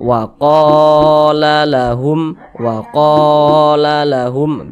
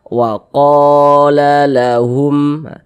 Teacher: Jadi ada huruf alif, sebelumnya ada tanda baca fathah, nah maka huruf yang memiliki tanda baca fathah tersebut dibaca panjang. Mad tabi'i panjangnya 2 harokat. Nah, 2 harokat itu kira-kira sepanjang 2 ketukan. 1, 2. Wa qala lahum begitu.